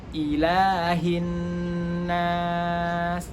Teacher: Untuk ayat yang ilahin nas itu lam memiliki harokat 2 harokat, dan begitu juga dengan ha. Ha itu makharijul hurufnya adalah di tenggorokan.